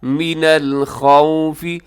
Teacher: خا ان حروف میں شامل ہے جن کو ہمیشہ موٹا پڑھا جاتا ہے، تو اس کو موٹا رکھیے گا، اور آگے واو لین ہے، اسے یہاں پہ ہونٹ گول کیجیے گا، خوفی، خوفی، اسے خوف نہیں کرنا آپ نے۔